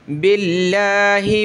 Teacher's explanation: लफ्ज़ अल्लाह से पहले ज़ेर है तो लफ्ज़ अल्लाह को पतला करेंगे।